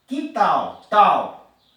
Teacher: A última sílaba tônica é tal, é mais forte, certo? Então é oxítona.